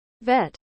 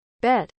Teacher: for V the upper teeth touch the lower lip for B both lips touch and fully closed so that no air escapes